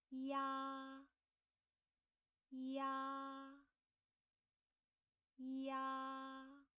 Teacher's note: A is the main vowel, so A has a longer time than E